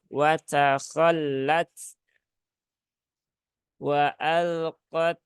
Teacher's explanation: lam tasdid ini jangan ditahan lama-lama ya